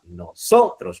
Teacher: la tónica en la penúltima sílaba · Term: palabra grave